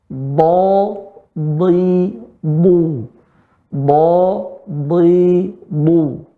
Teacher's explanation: Adapun bo, ya, dia di tepi lidah, bukan di ujung lidah. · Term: huruf bo